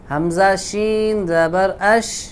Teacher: شین میں صفت تفشی ہے، آواز پھیلتی ہے